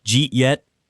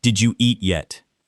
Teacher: You hear, Jeet yet? and you panic. Don't. Recognize the reduction, Did you eat yet?